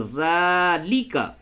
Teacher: زیر زبر کو جلدی پڑھا، کھڑا زبر کو کھینچ کر پڑھا